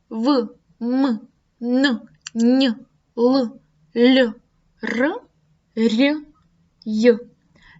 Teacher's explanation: Це є сонорні звуки. При творенні таких звуків голос переважає над шумом.